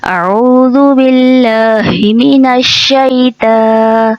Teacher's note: تا کو ہم باریک پڑھتے ہیں. عموماً جب ہم تعوذ کو پڑھتے ہیں تو اس کو پڑھنے میں طو کی جگہ تا کی آواز لے آتے ہیں